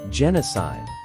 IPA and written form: ˈdʒɛnəˌsaɪd (genocide)